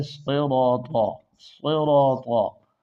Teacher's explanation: صاد موٹا ہے، را موٹا ہے، الف موٹا ہے، طا موٹا ہے، یہ تمام حروف موٹے ہیں، یعنی طا تا نہ بنے۔